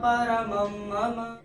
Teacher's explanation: और चौथे चरण में म के ऊपर जो अनुस्वार है उसके बाद का अक्षर है म। तो अनुस्वार के बाद म आएगा तो अनुस्वार का उच्चारण हो जाएगा। म